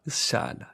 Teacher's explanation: the voice consonant actually creates breathy voice and then the vowel gets breathy voice